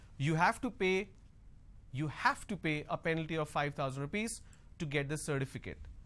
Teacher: Now here I'm going to stress on have. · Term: sentence stress